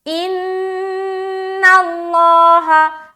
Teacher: نون کے اوپر شد آ گیا تو ہم یہاں پر نون مشدد کا غنہ کریں گے